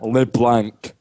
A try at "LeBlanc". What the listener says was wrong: Actually, they call it LeBlanc. I think they don't even pronounce the C, if I recall.